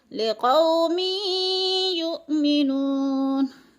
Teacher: लिक़ौमी युमिनून, या के ऊपर इदगाम है, दो ज़ेर तनवीन के बाद या मुशद्दद है, तो मीम को या के साथ मिलाकर इदगाम करेंगे, यानी मीम को या में मुदगम करके पढ़ेंगे।